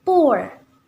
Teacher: posisi bunyi pertama lebih tinggi dari bunyi kedua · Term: diftong turun